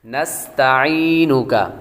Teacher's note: نستعینک، نون کے بعد سین ہے، اور سین کو سین حروف صفیریہ میں سے ہے، سیٹی والے حروف میں سے ہے، تو سیٹی کی آواز آئے گی اور بریک پڑیں گے۔ نستعینک، تا بھی بریک ہے، عین کی آواز نکالیں گے، عین کے بعد یا حروف مدہ میں سے ہے، اور آخر میں کاف باریک ہے۔